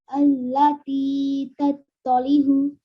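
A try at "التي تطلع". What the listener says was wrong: Okay, the ayn sound, okay? Allati tattali'u.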